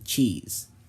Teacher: we make it with our tongue on the roof of our mouth instead of the ridge behind your teeth after that we immediately make a sh sound as as a result you'll get a CH sound as in